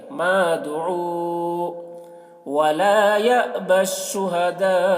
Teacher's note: شہداء میں مد متصل ہے کیونکہ حرف مد کے بعد حمزہ اسی کلمہ میں ہے